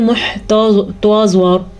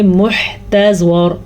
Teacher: تا باریکی سے پڑھنا ہے. ایسا نہ آپ زوات کو پر پڑھتے پڑھتے تا بھی پر پڑھ لیں، یہ تا ہے توا نہیں ہے.